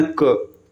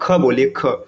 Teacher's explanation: जब आप क बोलेंगे ना, क, आप हवा बहुत कम निकल रहे हैं, अब ख बोलिए, ख थोड़ा से खींच कर आवाज निकलेगा।